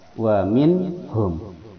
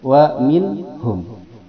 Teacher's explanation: Setiap nun mati dan tanwin jikalau menghadapi huruf yang 6 barusan itu harus dibaca jelas. Wa minhum, tidak ada dengungan, tidak ada kesamaran, dia jelas. Wa minhum, ha itu berada di pangkal tenggorokan menuju pada mim di 2 bibir. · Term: idhar